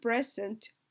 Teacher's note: xaguu stress galayaa wuxuu galaya qaybta hore maadaamuu noun yahay